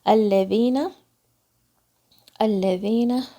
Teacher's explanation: یہاں پہ الذین، الذین، دال کی آواز لام کے مخرج کو آپ نے پریس کرنا ہے تھوڑا سا، پھر دال کی آواز زبان کی نوک سے آئے گی